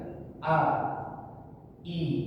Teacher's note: Jadi hamzah itu ketika diucapkan itu dia tidak mengalir. Contohnya kalau secara sendiri, contohnya dia tidak bacaan tidak i, dia tidak lembut gitu ya, tapi ditekan a i gitu. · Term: syiddah